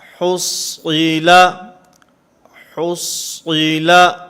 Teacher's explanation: صاد کو پر پڑھیں گے، ہا کو بھی باریک پڑھیں گے، لام کو بھی باریک پڑھیں گے